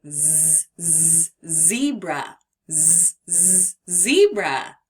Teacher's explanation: When you're making it, you will feel a vibration both in your throat and in your mouth.